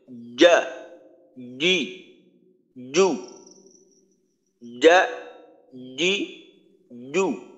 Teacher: পার্থক্যটা হলো জিম যখন উচ্চারণ করব তখন জিহ্বার মধ্যখানকে উপরের তালুর সাথে শক্তভাবে চাপ দিয়ে ধরে শক্তভাবে উচ্চারণটা করতে হবে